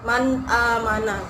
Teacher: Nun matinya dibaca jelas, tidak didengungkan, tidak dipanjangkan. Jadi harus jelas menjadi man amana. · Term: izhar